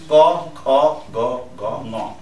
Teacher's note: जहिले पनि आवाज सुरु हुँदो रहेछ फ्रन्टबाट अनि बिस्तारो रोटेट गरेर अनि लास्टमा नाकबाट निस्किने